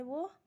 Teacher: दांत और ओष्ठ दोनों की सहायता से बोला जाता है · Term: दंठोष व्यंजन